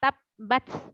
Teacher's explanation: Terhenti, tapi dia ada desisnya sedikit.